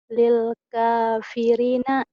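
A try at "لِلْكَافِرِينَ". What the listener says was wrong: Rinya panjang atuh. Ini kan ada pemanjangnya. Linya panjang.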